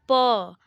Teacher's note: तो हमारा दोनों होठ स्पर्श करता है तब जाके हम प पढ़ पाते हैं तो इनका उच्चारण स्थान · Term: ओष्ठ